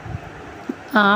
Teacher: आ मतलब विवृत, पश्च और दीर्घ स्वर।